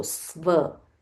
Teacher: there is a half s, then followed by v. So sva, Swayambhu.